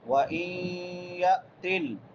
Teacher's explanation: نون ساکن کے بعد حروف یرملون میں سے یا آ گئی ہے تو یہاں پہ ادغام مع غنہ ہوگا